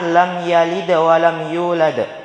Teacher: Terjadi apabila adanya huruf qalqalah, salah satunya juga huruf dal yang berada di tengah ayat, maka cara membacanya pantulnya dibaca ringan